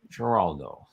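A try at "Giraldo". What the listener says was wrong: It's not soft G, it's a hard G, yeah. You just don't pronounce it as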